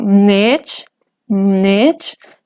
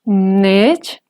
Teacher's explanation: esta palabra tiene tono ascendente